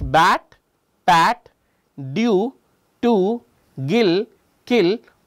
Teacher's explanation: what is happening is I'm temporarily blocking the air flow and then letting it go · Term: plosives